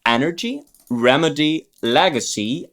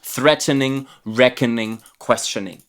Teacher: three syllable words with the stress on the first syllable